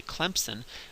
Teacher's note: you put a p in there and there's no p in the word